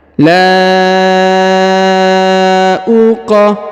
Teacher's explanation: huruf qaf berharokat sukun, atau huruf mati, ya, harokatnya harokat mati atau harokat sukun, maka kita pantulkan atau kita qalqalahkan